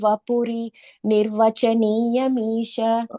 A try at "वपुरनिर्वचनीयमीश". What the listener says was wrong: Okay, and the fourth line is vapura. You're saying vapuri.